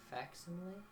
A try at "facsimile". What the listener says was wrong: Facsimile. You don't pronounce the C. No. Okay, you can pronounce the C. But I don't because...